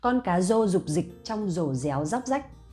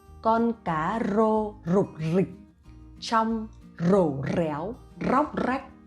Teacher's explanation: the R sound I pronounce as Z sound in English, but for some provinces and some cities, they still pronounce R